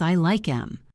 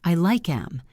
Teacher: Often, native speakers drop the TH sound in the word them